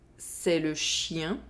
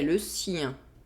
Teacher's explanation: Here, there is a difference in consonant sound. There is the [ʃ] sound in the first sentence, and the [s] sound in the second sentence.